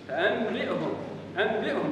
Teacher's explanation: قلب النون عند التقائها بالباء قلبها ميما